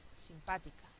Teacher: Donde el acento está en la tercera sílaba empezando por el final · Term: esdrújulas